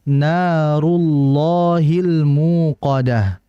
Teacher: Dan kita lihat di sini pada ayat yang keenam itu harakat sebelumnya ada dammah rullah maka dibaca dengan tebal